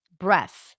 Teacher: I'm just releasing air between the tongue and teeth that creates this friction sound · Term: voiceless th